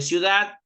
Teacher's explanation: En el caso de ciudad, dad es la sílaba tónica que lleva la mayor fuerza de voz.